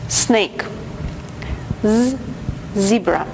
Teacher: звуки с из также произносится на альвеолах При этом они слегка шипят как будто бы вы шепелявите